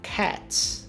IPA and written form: kæts (Cat's)